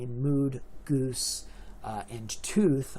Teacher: mood, goose, and tooth are left with a long U vowel, the goose class